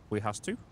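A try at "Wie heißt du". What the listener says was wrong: V heist do. W's are pronounced like V's in German.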